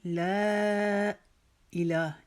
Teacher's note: ला को हम लंबा करेंगे चार अलिफ के बराबर